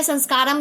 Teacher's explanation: अनुस्वार, नासिका से निकलने वाली ध्वनि, विसर्ग का उच्चारण हा को भांति होता है।